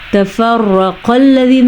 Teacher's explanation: را کو پر پڑھیں گے اور موٹا قاف ہے تو اس کو بھی پر پڑھیں گے